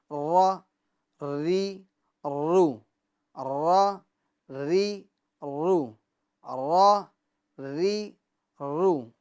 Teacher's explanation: یعنی اس کے ادا کرتے وقت مخرج میں کپ کپاہٹ ہوگی، اور یہ کپ کپاہٹ بھی ہلکی سی ہوگی، مشابہت تکرار، ٹھیک ہے، اتنی زیادہ کپ کپاہٹ پیدا نہ کرے کہ ایک را کی جگہ پر کئی را ادا ہو جائے، جیسے را، ری، رو، نہیں، یہ بہت زیادہ ہو گیا، ہلکی سی کپکپاہٹ ہوگی، ر ری رو، ر ری رو، ر ری رو، ٹھیک ہے.